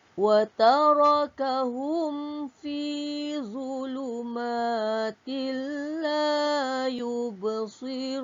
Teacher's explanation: hum dibaca dengan terang. Mim mati bertemu fa hukumnya izhar syafawi.